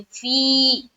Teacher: फीही, फा या ज़ेर फी, फा या ज़ेर फी, यहाँ पर या मद्दा कर रहे, तो क्या करेंगे, जोर डालते हुए एक अलिफ की मकदार के बाकदर खींचेंगे